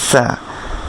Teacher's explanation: আপনার জিহ্বার আগা নিচের দাঁতের গোড়ার সাথে বা মাঝখানের সাথে লেগে একটা তীক্ষ্ণ বাতাস সহ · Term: সিন